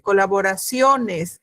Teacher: la fuerza de voz recae en la sílaba sio y en la vocal o específicamente